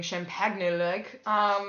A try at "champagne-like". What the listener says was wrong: You don't pronounce the G in champagne. It's not champagne. It's champagne, so it would be champagne-like.